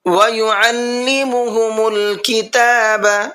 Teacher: عین کو حلق سے نکالنا ہے